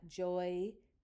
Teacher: this is not a soft C, it's a Z sound where you have that plural making the Z after the Y sound